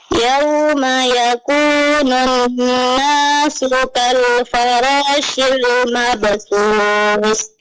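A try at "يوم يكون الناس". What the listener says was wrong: Nah, ditambah sedikit lagi dengannya Bu pada nun tasydid. Yauma yakunun nasu.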